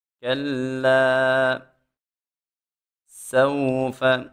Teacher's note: سین میں خوب سیٹی پیدا کریں گے